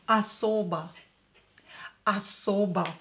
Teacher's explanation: Not stressed, not stressed, so we will pronounce them as A.